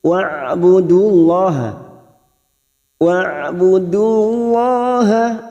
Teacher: huruf Ain Jangan samakan dengan Hamzah Ain memiliki sifat tawasud